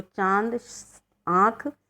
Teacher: अनुनासिक इन स्वरों का उच्चारण नाक और मुंह दोनों से किया जाता है